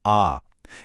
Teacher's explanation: और फिर आता है वो स्पेशल केस अर्धवर्तुल जिसका इकलौता उदाहरण है आ। इसमें होठ ना तो फैलते हैं ना ही पूरे गोल होते हैं। बस नेचुरली खुले रहते हैं।